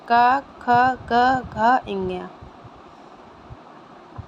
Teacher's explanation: कंठ में का आता है तो क का उच्चारण हम लोग का वर्ग का उच्चारण कंठ से करेंगे